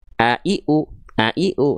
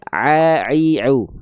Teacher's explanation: Kenapa? Karena ainnya dilafalkan enggak tepat dari tengah tenggorokan. Tapi teman-teman melafalkan terlalu ke bawah. Jadinya a i u bunyinya hamzah nanti.